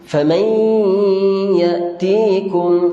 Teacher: Di situ idgham ma'al ghunna. Kita kena baca dengan dengung banyakkan di hidung, ataupun dengan kata lain kita sengau lah. Idgham ma'al ghunnah ni kita kena dengung dengan sengau.